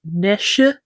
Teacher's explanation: in earlier uses it often appeared as nesha with a extra unstressed syllable on the end or even earlier with that like breathy guttural sound at the front.